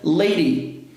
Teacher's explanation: Som de vogais. Então, esse D vai passar a ter som de R